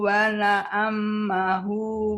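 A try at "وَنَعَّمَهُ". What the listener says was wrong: Wana, wana, amahu, tasdidnya di ain aja, Bu.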